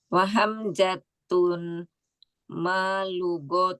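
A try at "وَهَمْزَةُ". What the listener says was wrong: Nah, hamzatu tanpa tanwin Umi. Ingat nama bila diakhiri dengan tak marbutoh dia mamnu minas sorf atau isim ghairu munsorif ya, tidak boleh bertanwin. Wa hamzatu.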